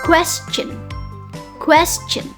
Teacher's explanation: So, question has two syllables. The first syllables is the word stress, which is quest. Quest. Quest.